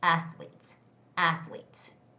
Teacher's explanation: the word athletes has the first syllable stress